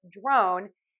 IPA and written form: droʊn (Drone)